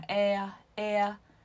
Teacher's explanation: 要注意你在一开始发▁a▁的时候是紧绷的▁a，▁咧嘴▁a▁笑，然后慢慢放松，慢慢放松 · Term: 双元音